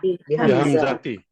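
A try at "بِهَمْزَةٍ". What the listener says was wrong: Sini boleh pakai tanwin.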